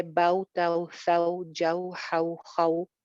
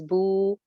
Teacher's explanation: लंबा करके इसकी अदायगी नहीं होती जैसे वाव मद्दा की अदायगी में हम लंबा करते हैं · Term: वावलीन